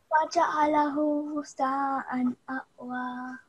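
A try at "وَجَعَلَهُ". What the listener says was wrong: Okay, and again, this is a ha that you're pronouncing like a hamza. So you don't say ahwa, you say ah, you're supposed to say ahwa. And also, this is the letter tha, and it's connected to this mad kabira, which is a 4 to 6. Second prolongation, okay? So extra, extra long.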